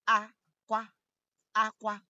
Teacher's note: The first a is high and the last a is high.